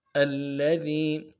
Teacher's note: حمزہ کو لام کے ساتھ ملانا ہے، لام کے اوپر تشدید زور دیں گے، اگلے لام کو نرم سے ادا کریں